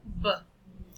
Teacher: It's a voiced consonant sound in terms of the state of the glottis. It is also a bilabial sound because the organ that articulated this sound is the lip, the upper and the lower lip, taking care of the place of articulation, bilabial.